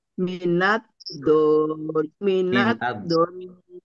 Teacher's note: Pendek tetapi mendengung ditahan. Ya, karena nun tasdid, jadi nunnya dua.